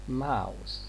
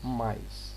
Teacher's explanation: We have got the diphthong ow, and we have got another diphthong which replaces it